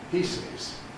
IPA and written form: ˈpiːsɪz (pieces)